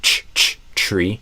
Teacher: I actually kind of changed the t to a ch when it's before an r.